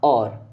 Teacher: ही जब और का उच्चारण करते हैं आप और है ना पहले होट टच हो रहा है फिर कंठ से आवाज निकल रही है